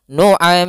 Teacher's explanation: Dan gunnahkanlah huruf mim serta nun ketika ia bertasydid keduanya. Maka di sini ada mim bertasydid. Cara membacanya mimnya ditahan juga.